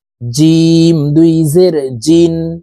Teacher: জিম হরফ জিহ্বার মধ্যখান থেকে পড়তে হবে কারণ জিমের মাখরাজ জিহ্বার মধ্যখান থেকে হবে জিম দুই জের জিন